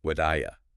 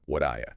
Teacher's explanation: That T in what often softens to a D sound, or can even disappear in really quick speech, especially before a vowel sound like the oo in do you.